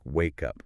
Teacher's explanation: >> In natural spoken English, we link words together, >> right? Because wake ends in a consonant sound and up starts with a vowel sound. We just push them together.